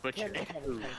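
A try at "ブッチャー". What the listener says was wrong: You don't put emphasis on the U. Butcher. No, in Japanese it would be butcher. Butcher. Boo. Butcher. We're talking about the fourth pronunciation of U. It's U with the two dots on the top.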